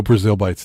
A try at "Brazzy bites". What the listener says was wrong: Well, you said Brazil. Because, you like add letters and remove them.